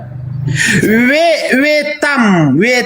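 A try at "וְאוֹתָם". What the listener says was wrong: Salah, veotam. Ini veotam bukan vetam, bukan veotam, nih ada yud di atas.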